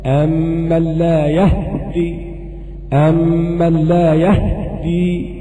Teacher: وهناك وجه آخر لقالون، وهو إسكان الهاء وتشديد الدال. أمن لا يهدي، أمن لا يهدي، ده قراءة قالون في الوجه الآخر.